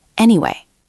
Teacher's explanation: You can't just say it flat. You have to say it with a falling tone like you are concluding something.